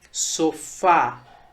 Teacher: na palavra sofá, a sílaba tônica, a sílaba mais forte é a sílaba fá, que é a última. Por isso, ela é uma palavra oxítona.